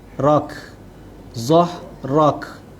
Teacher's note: Kemudian zahrak, huruf ha, hamas, ra berbaris di atas, ra tebal, dan huruf kaf yang kita matikan di hujung ayat yang membentuk sifat hamas